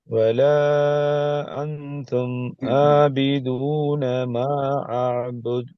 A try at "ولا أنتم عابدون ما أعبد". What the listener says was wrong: அதுல ரெண்டு பிழை வருது. ஐனை மலிஃபை நீங்க மாத்திக் கொள்றீங்க. மத்திர அடையாளம் நீக்குது, அதையும் பார்த்துக்கோங்க.